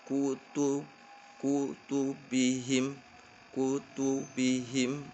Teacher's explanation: Yang kedua, bibir kembali ke posisi netral di antara dua dammas atau dua kasras yang berurutan